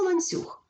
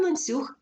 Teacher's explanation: твердий н під впливом м'якого сусіда стає м'яким